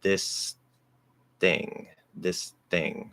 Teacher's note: i'm doing a dental d on this because it's voiced